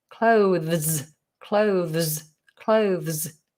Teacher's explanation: you have the TH, which is a fricative at the front of the mouth with the tongue poked out. And then you've got another fricative, which needs the tongue to be in.